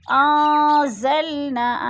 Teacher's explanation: انزلنا، ان پہ اخفا ہے، نون ساکن کے پاس زا آ گیا ہے تو ادھر اخفا کریں گے، آواز کو ناک میں چھپا کر پڑھیں گے۔ نا پہ الف مدہ ہو رہا ہے۔